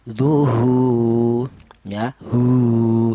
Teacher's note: Yang ketiga berupa wau mati. Syaratnya wau mati ini menjadi mad thai. Didahului huruf yang berharakat domah. Panjangnya sama yaitu satu alif atau dua harakat atau dua ketukan. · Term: mad thobi'i